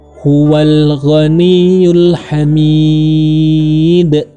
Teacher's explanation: karena dia kubro besar maka dalnya dibaca memantul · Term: qalqalah kubra